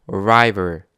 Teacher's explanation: 하지만 R 발음할 때는요. 혀가 입천장을 닿지 않습니다.